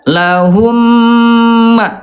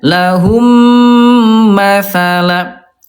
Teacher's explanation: dibaca lebur, ditahan dua ketukan lambat dan didengungkan.